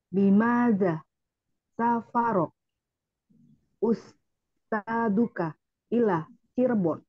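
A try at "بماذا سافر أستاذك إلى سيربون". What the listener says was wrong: Nah, sekarang nggak usah pakai jeda, karena kalau tadi kan sedang latihan. Jangan pakai jeda, Bu. Jangan pakai jeda.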